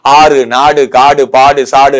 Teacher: எடுத்தோ பல எழுத்துக்கள் எடுத்தோ வரும்போது தன்னுடைய ஒரு மாத்திரையிலிருந்து எத்தனை மாத்திரை குறைஞ்சிரும் அரை மாத்திரையாக குறைந்திரும் அவ்வாறு குறைந்து ஒலிக்கும் உகரம் குற்றியல் உகரம் என்று அழைக்கப்படும்